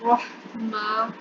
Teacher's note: ہا جو ہے اس کی آواز حالت سے نکالیں گے. رحما, میم پہ کھڑا زبر ہے, اس سے لمبا کریں گے